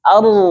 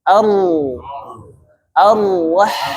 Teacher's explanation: ketebalan huruf ro itu bukan karena bibir. Karena apa? Pangkal lidahnya naik ke langit-langit sehingga suara menjadi tebal.